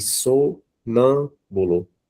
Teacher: o nã, que é a sílaba mais forte